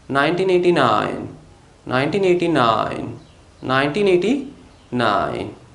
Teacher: if we have phone numbers for example 1989 we stress on the last number nine